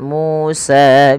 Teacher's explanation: MU dan sa harus dipanjangkan sama ya